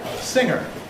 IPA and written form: ˈsɪŋɚ (singer)